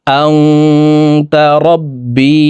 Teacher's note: এই নুন সাকিনকে নাকের ভিতরে লুকাইয়া গুন্নার সহিত পড়তে হবে